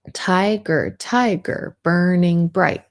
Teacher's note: it starts with a stress or bold syllable followed by unstressed and it's a pattern of every other one stressed unstressed stressed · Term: trochaic